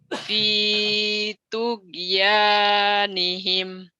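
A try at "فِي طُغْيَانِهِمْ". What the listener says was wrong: Tugenya kalau kayak orang Sunda gitu tuh kenceng. Nah, G-nya itu heeh, G-nya agak agak pecah sedikit. G-nya heeh. Jadi V-nya panjang dulu tapi V Kan kan orang Jawa ada tugimin, tugimin. Jadi ngomongnya tugimin, tugimin, warimin. G-nya agak pecah gitu.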